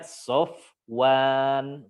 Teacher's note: Fa di bibir, waw juga di bibir, ya. Walaupun waw dia bukan, dia tidak memiliki sifat yang idlaq, ya.